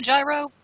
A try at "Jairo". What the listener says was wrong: By the way, my name is pronounced Jairo. It's Yeah, Jairo. Yeah. But it's the J that confuses everybody. It's pronounced Jairo.